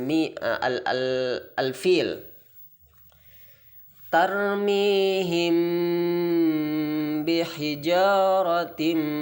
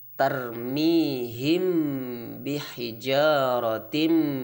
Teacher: cara membaca Ikhfa Syafawi harus samar-samar di bibir dan didengungkan